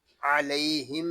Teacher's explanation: علیہم میں یا لین ہے اور میم ساکن میں اظہار شفوی ہوگا